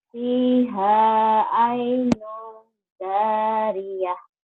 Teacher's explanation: Nunnya ini ketemu jim ikhfa. Ada bindengnya tadi.